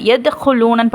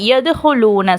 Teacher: அடுத்தது எதுஹுலூனன்னு படிக்காமல் எதுஹுலூன. ஸோ அந்த தாலை கொஞ்சம் அசைச்சி ஓதுறோம். அந்த கல்கலாவுடைய சட்டம் இருக்குது.